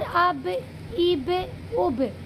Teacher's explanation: बा को जो निकालने का तरीक़ा है, उसको जब हम निकालेंगे तो वो एकदम टक्कर खाएगा पहले, फिर अलग हो जाएगा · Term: क़लक़ला